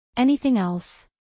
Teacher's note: anything Else acentuación en la primera sílaba